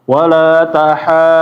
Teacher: dipanjangin lebih panjang dari mad wajib sama mad jaiz karena dinamakan mad lazim yaitu betul-betul panjang sampai enam harakat